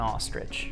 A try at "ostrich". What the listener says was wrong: You're saying it like R-I-D-G-E. It's I-C-H. Ostrich.